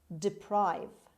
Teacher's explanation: The stress is on the second syllable on P. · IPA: /dɪˈpraɪv/